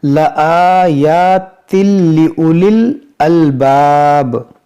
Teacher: دیکھیے یہ الباب تھوڑا کھینچیں گے، یہاں مد عارض ہوگا ، رکنے کی وجہ سے یہاں پر عارضی سکون آ رہا